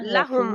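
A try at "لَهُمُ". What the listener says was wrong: लाहुम नहीं है, लाम को जरा भी नहीं खींचना,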